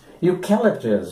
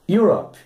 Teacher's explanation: Então você notou que o grupo de letras EU aqui foi pronunciado como se fosse o grupo IU da língua portuguesa. O som inicial, então, como se fosse de um Y, um som consonantal.